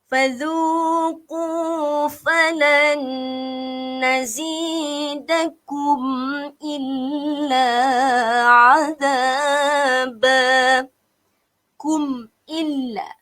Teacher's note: Kita tak boleh dengung sebab mim mati berjumpa dengan huruf alif. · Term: izhar syafawi